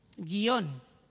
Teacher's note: esta palabra no la pronuncian como bisílaba, sino que la pronuncian como monosílaba, guión. Y entonces ahora ellos se planteaban, ¿por qué si yo pronuncio esta palabra como monosílaba voy a ponerle la tilde?